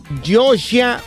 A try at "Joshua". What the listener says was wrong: Joshua. Es que tiene la I y la A al final. No mira una U.